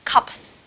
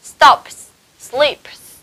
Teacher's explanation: Đó là những âm mà chúng ta sẽ thường đọc nó theo giọng gió và âm của nó sẽ không rung ở trong họng của chúng ta, và các em phát âm từ đấy nó không có điều gì ngăn cản cả, tức là nó chỉ là âm gió mà thôi đó. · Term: âm vô thanh